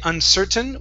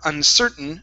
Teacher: We can either say uncertain with a normal T, okay, or uncertain swallowing the T. We cannot say uncertain with a flap T.